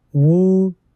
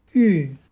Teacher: the first vowel was changed from a back vowel, wu, to a front vowel, ü, but the other properties of backness remain unchanged like rounded and closed.